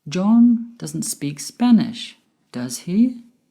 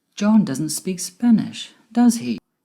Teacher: my voice went up at the end with does he because i'm not sure whether he speaks spanish or not falling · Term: rising intonation